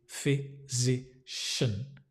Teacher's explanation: Sounds like fizzy, like a fizzy drink. Fizzy, physician. Fizzy. So it's a voiced z. Physician. That n is almost disappears.